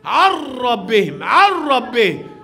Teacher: شوف النون بدخلها في الراء، إدغام كامل